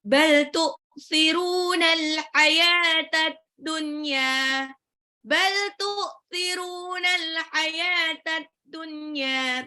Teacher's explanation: roknya 2 harokat, matabi'i, al hayata, alif lam komariah, ya-nya 2 harokat, taknya tak marbutoh, ad-dunya, alif lam syamsiah.